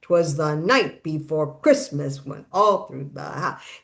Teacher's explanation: it's the two unstressed and a stress. So it's 'twas the night before Christmas went all through the house, and those all scan perfectly. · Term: anapestic